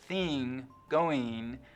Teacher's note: the short I vowel, the kit vowel, is being split in two. Before NG, it's likely to sound like E, so thing, going, just like the rest of the West, but otherwise it's lowered like dress and trap.